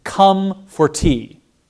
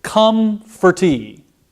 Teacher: Come and tea are stressed. For is an unstressed syllable, so I just glide over that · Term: stress timed